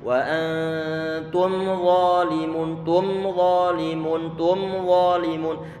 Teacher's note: kita tarik sedikit suara mim tanpa kita tahan suara dengungannya. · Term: izhar syafawi